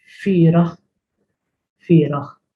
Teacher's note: They're both correct as far as I know, not fully sure, but I prefer with the ein at the end, which is pronounced as h.